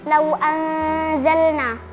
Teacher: Hukumnya ikhfa hakiki. Karena nun sukun bertemu dengan huruf zai dibaca samar.